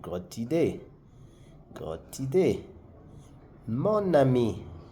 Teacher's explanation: For the D, you will hear the T sound. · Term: liaison